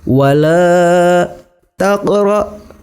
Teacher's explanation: Cara membacanya huruf qafnya agak sedikit dipantulkan. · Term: qalqalah sughra